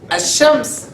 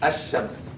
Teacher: So shamsiyya means you don't pronounce the lam.